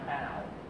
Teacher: In contemporary British English, the vowel starts from the front of the mouth. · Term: mouth vowel